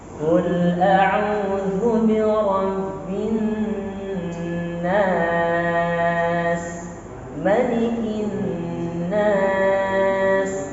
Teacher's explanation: Ayat 1 dan ayat 2 dengan nada rendah dan tinggi.